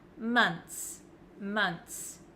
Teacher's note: it looks like there's just a TS at the end I don't pronounce the h